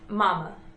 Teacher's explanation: two syllables bilabial nasal lips pursed in smooth vibration pushing air through the nose